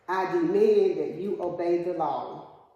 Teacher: So your voice raised on that second uh syllable. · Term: accent